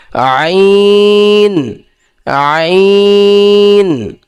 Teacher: আইন একদম স্বাভাবিকভাবে আইন এরম বলা যাবে না একদম স্বাভাবিক আইন আইনের মাখরাজ কি কন্ঠনালীর মধ্যকান হইতে হবে যে হলকের মধ্যকান হইতে আইন